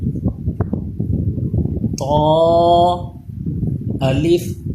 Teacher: اس کو تا پڑھنا ہے لیکن موٹا پڑھنا ہے